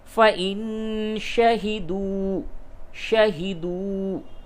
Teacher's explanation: نون ساکن کے بعد شین ہے، اخفا کیجئے